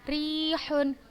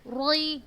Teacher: Sudah baca ro yang berharokat kasrohnya tipis. Tarqiq berarti ro-nya.